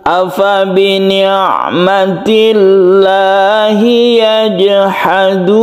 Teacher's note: lafzul jalalah, yang sebelumnya ada kasroh, otomatis dia dibaca tipis atau tarqiq, atau disebut juga muraqqaqah, muraqqaqah.